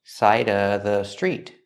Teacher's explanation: You can say side of the street, or you can eliminate the V sound in of, because it's before a consonant